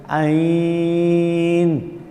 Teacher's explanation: وسط حلق سے حلق کا درمیان حصہ عین